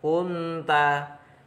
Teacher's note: Kemudian walau kunta, hukum bacanya sama dengan linta, yaitu ikhfa hakiki, ada nun sukun bertemu ta, dibaca samar,